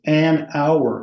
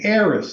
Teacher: you don't put much air behind the H sound, such that it can be either completely silent or nearly silent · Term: unaspirated